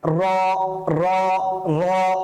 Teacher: এই র উচ্চারণটা করার সময় না আমাদের ভেতর থেকে এক ধরনের উচ্চারণটা প্রকম্পিত হতে থাকবে প্রকম্পিত হওয়া মানে বারবার হচ্ছে বেসিক্যালি সেটা প্রতিধ্বনিত হতে থাকবে আমরা